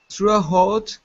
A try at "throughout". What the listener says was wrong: Okay, instead of throughout, okay, the GH is silent. We do not pronounce those in this word. Okay, it is throughout. Throughout. Now, this is a TH here. So when they are paired together, okay, we pronounce them using our tongue and our teeth. So instead of throughout, it's through.